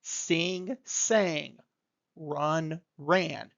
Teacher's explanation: Not adding a sound to the end, but taking the sound in the middle, that soft, round vowel shape, and modifying it. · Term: vowel change